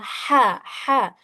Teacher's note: Bagian kedua di sini ada wasatul halq atau artinya adalah tenggorokan bagian tengah. Nah, tenggorokan bagian tengah hurufnya ada huruf ain dan huruf ha.